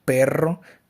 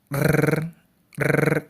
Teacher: Para ejemplificar este tipo de sonido podemos encontrar la palabra carro, perro, que con el sonido, cuando hacemos el sonido de la R, pues esta vibra múltiples veces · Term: vibrante múltiple